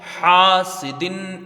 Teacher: حا میں الف مدہ ہے، اس کو ایک الف کی مقدار کھینچ کے پڑھا جائے گا